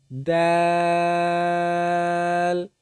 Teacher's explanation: জিহ্বার আগা উপরের দুই দাঁতের গোড়ার সঙ্গে উচ্চারিত হয় দাল।